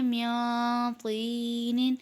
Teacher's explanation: اب یہاں پر نون ساکن کے بعد طوا ہے، طوا بھی حروف اخفا میں سے ہے، تو اس لیے یہاں بھی غنہ کر کے پڑھیں گے